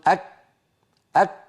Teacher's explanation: الشعوب التي من حول العرب في عصرنا مثلا من الشعوب المسلمة من ينطق الكاف في لغته غير العربية بترا، فيقول أك أك هكذا، كاف مبتورة من غير همس